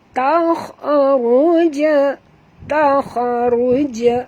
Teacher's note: dekat jim ini ada tanda sukun, maka kita kena lantunkan bacaan kerana huruf jim adalah huruf qalqalah ya.